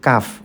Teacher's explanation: Nah, dan tempat keluarnya atau makharijul huruf kaf itu adalah berdekatan dengan huruf qaf yang tadi. Huruf kaf ini tempatnya lidah bagian belakang bertemu dengan langit-langit keras.